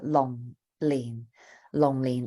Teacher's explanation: two low falling tones